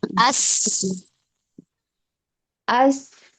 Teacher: suara mengalir tidak tertahan ketika dibaca ada udara di depan mulut.